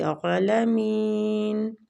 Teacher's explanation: عین پہ کھڑی زبر ہے تو کھینچیں گے، عالمین۔